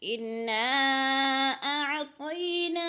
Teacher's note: اور انا، نا پہ مد ہو رہی ہے، مد منفصل۔ حروف مدہ کے بعد حمزہ دوسرے کلمے میں ہے تو مد منفصل 4 الفی مد ہے، یعنی 4 حرکات کے برابر کھینچ کر پڑھیں گے۔ انا اعطینا، اعطینا، کو ہلانا نہیں ہے، عین کو حلق سے نکالنا ہے، اس لیے کہ یہ حروف حلقے میں سے نہیں ہے، اس لیے نہیں ہلانا۔